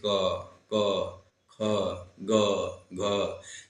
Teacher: तो ये कह रहा है कि जिन व्यंजन ध्वनियों के उच्चारण में जीवा के पीछे, है ना, जीवा के पिछले भाग में कोमल तालु का स्पर्श होता है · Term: कंठ व्यंजन